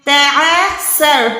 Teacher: سین کو وصل ساؤنڈ دے، سیٹی کی آواز دے، را کو موٹا رکھے